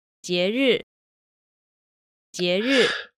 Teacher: you'll notice that the fourth tone starts considerably higher than where the second tone ends. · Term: 2-4